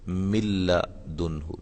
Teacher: نون بالکل نہیں، نون کی آواز نہیں آئے گی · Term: ادغام بلا غنہ